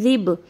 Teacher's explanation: दोनों दांतों के दरमियान में अपनी ज़बान को आप करोगे, लेकिन आप उसको मतलब दबाओगे नहीं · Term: ज़ाल